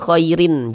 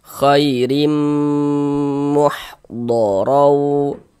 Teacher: Dengan cara memasukkan. Jadi bunyi tanwinnya dimasukkan ke huruf mim. Khairim, jangan dibaca khairin, jangan dibaca khairim, masuk melebur ke huruf mim. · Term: idgham bi gunnah